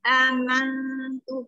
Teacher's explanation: Amantu bacaan ikhfa aqrab, samanya seimbang. Amantu ketika kita mengucapkan nun, lidah kita sudah menyentuh makhraj ta di belakang gigi seri, di gusi belakang gigi seri.